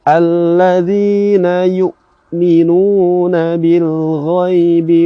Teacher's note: Dan ketika hamzah ini bertemu dengan sukun atau hamzah ini dalam posisi sukun, maka hamzahnya perlu diberhentikan tanpa tersisa baik itu nafas ataupun suara